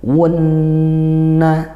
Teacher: Nun bertasydid dibaca ghunah Dibaca dengung gitu ya baca dengung yang lama